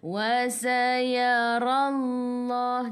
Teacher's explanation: Ra baca dengan tebal. Ra baris atas. Sebelum lafzul jalalah ada baris atas kena baca tebal.